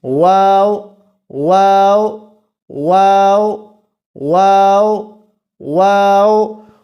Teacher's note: کیونکہ واو کا تعلق ہونٹوں کے ساتھ ہے تو ہم اس کو شفوی حرف کہیں گے